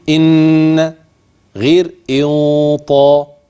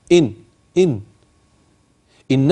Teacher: الفارق ان النون المخفاه لا عمل للسان فيها مطلقا ا اللسان بيبقى فين سا مش عند الم طرف اللسان في